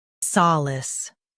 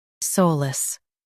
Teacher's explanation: US says sa, UK says sol.